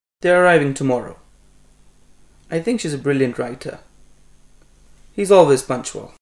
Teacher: The following type of sentences are generally said with the falling tone.